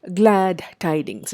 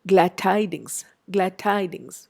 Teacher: We notice that the d is hardly heard there. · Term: assimilation